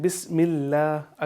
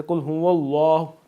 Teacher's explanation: My dear students, जब भी आपने तस्मिया पढ़नी है तो बिस्मिल्लाह, अल्लाह तबारक व तआला का जो ये नाम है उससे पहले जब ज़ेर आती है तो हम उसको बारीक पढ़ते हैं, बिस्मिल्लाह। अगर ज़बर या पेश हो तो हम उसको पुर पढ़ते हैं